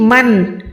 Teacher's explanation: یہاں پر آپ نے نون کو ظاہر کرنا ہے، اس کو ہم کہتے ہیں اظہار کا قاعدہ۔ ویسے ہوتا ہے ماں، نون کو ہم چھپاتے ہیں وہ ہوتا ہے اکفا، اب نون کو پروپر ظاہر کریں من تو یہ ہو جائے گا اظہار کرنا، یعنی ظاہر کرنا، کس کو ظاہر کرنا، نون کو ظاہر کرنا۔